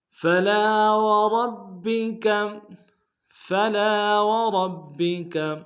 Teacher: فلا میں لام کے ساتھ الف مدہ ہے، ایک الف دال میں کھینچیں گے